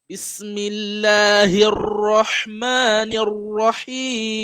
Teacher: No, that is not correct, right? It should be tafkhim, right? So you have to make sure your mouth is curved, right, to pronounce the ra.